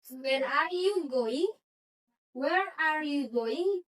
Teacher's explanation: Jadi nadanya itu turun. Jadi ini yang dimaksud dengan pertanyaan dan tidak membutuhkan answer yes or no. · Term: intonasi turun